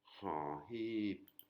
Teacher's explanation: c'est un H inspiré, il faut faire sortir de l'air de la gorge.